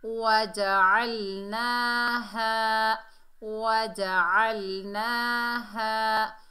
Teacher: आइन को लाम से मिलाएंगे, लाम साकिन से, और आइन को हलक के दरमियान से अदा करेंगे।